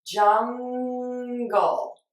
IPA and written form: ˈdʒʌŋ.ɡəl (Jungle)